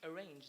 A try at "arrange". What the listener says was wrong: Arrange, not arranged.